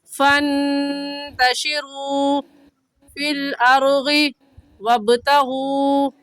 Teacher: फिल अर्गी में गा साकिन से पहले ज़बर आ गया तो गा साकिन को पुर यानी मोटा करेंगे